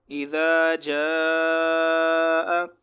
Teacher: یہ جو جاء کے اوپر ہے مد متصل واجب اس کو کہتے ہیں، اور ان کو 3 سے 4 الف کے برابر کھینچنا واجب ہے. ہر حالت میں 3 سے 4 الف کے برابر اس مد کو کھینچنا واجب ہے. اس کو مد متصل واجب کہتے ہیں.